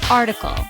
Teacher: It has 3 syllables. The stress is on the first syllable.